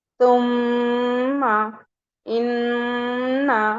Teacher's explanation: 2 count اپنے نوز میں رکھنا ہے، یعنی نیزل کیویٹی سے، جو ہمارے نوز کے اندر کی بون ہوتی ہے جسے ناک کا باسا کہتے ہیں، تو دونوں ہی ابھی آپ اپنا نوز بند کر لیجئے تو آپ میم مشدد نہیں پڑھ پائیں گی۔ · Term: غنہ